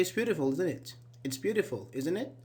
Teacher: when we just state our opinion and we do not expect a response, we make it falling.